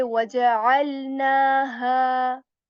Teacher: you are supposed to stretch na and ha here for two counts, because first of all, on noon letter here there is this straight line symbol, so we stretch this symbol for two counts as well.